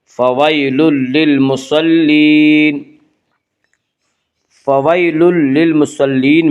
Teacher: آگے آیت ہے، وقف کریں گے، طعام المسکین، طعام المسکین، ولا يحض على طعام المسکین فویل للمصلین، فویل یالین وہ یا جو ساکن اس سے پہلے زبر ہو، یالین کو نرم آواز کے ساتھ جلدی پڑھیں گے